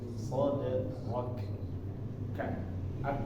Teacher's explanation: Ada angin deras ya, kedengaran mengikuti di huruf kafnya. Soderok, K, ak.